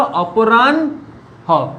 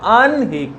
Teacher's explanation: হয়ের সঙ্গে যদি দন্তন্য বা মূর্ধন্য যুক্ত থাকে সেই নয়ের উচ্চারণ কিন্তু হয়ের থেকে আগে হয়। যেমন আহ্নিক বা মধ্যাহ্ন, আহ্নিক শব্দটা দেখো আনহিক কিন্তু বানানের সময় কি হয়েছে দেখো, হটা আগে আছে।